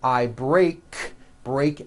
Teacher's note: break ends with an unvoiced k sound